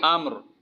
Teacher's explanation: وقف کی حالت میں یہ را موٹی پڑی جائے گی